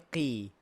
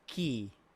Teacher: Bila baris bawah dia kurang sikit ketebalan dia.